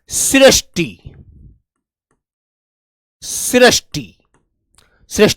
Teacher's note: ये जो आवाज देता है रे प्लस छोटी वाली ई की आवाज देता है ये और इसकी जो ध्वनी होती है मेरे भाई वो री होती है ऋ इसकी ध्वनि ऋ होती है।